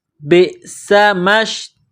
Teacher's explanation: بئس، با کو حمزہ کے ساتھ ملانا ہے، حمزہ ساکن ہے، با کو جب حمزہ کے ساتھ ملائیں گے تو جھٹکا دیں گے